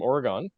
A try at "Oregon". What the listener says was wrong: actually, you just pronounced it like a true Canadian. It's actually pronounced Oregon. know you're from out of state if you say Oregon. Yeah, there's no E on the end, right? So it's Oregon, like your like an organ in your body.